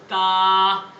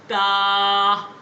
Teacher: ऊपर के 2 दांत और आपके ज़ुबान का हिस्सा लगे